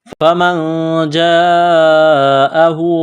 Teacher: نون ساکن کے بعد جیم ہے، حروف اخفا ہے، غنہ کریں گے، آواز ناک میں چھپائیں گے